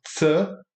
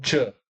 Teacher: o ts é menos alto, então o tch vai ter que ser mais alto e o o ts também é mais anterior.